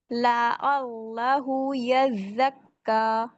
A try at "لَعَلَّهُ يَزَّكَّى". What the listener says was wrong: عین کو موٹا نہیں کرنا، لعلہ یزکا.